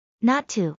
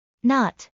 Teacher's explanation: In not to, the t in not practically disappears and the following to is pronounced relatively strongly. In not, the t is extremely weak and barely audible.